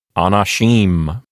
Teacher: with the accent thrown to the end, the last syllable